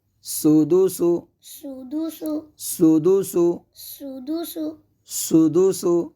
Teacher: اب یہاں پہ ہم سین کو سیٹی کے ساتھ ادا کریں گے